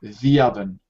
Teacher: when you say it together there's a y sound